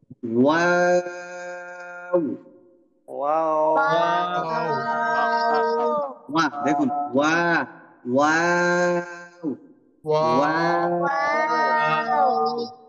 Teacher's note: দুই ঠোঁট গোল করে শুরু করব, মাঝখানে স্বাভাবিক এবং শেষে আবার গোল করে বন্ধ করব।